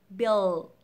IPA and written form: bɪld (build)